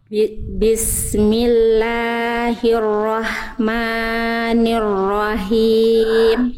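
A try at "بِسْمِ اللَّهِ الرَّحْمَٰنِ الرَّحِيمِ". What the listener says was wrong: Oke, pertama di bagian la dan ma dibaca berapa harokat, Bunda? 2 harokat. Tadi Bunda masih terlalu kepanjangan. Jadi 2 harokatnya Bunda tadi masih terlalu kepanjangan. Bunda cukup lafalkan kalau masih bingung 2 harokat itu panjangnya segimana, diayunkan saja pelafalannya, ya. Bismillahirrahmanirrahim.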